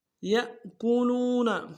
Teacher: یا کو حمزہ کے سامنے لانا ہے، جھٹکا دیں گے، لام کو واو کے سامنے لائیں گے، واو مدہ ایک اختیار میں کھینچیں گے